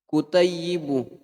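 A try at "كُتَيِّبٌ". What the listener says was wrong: Tanwin.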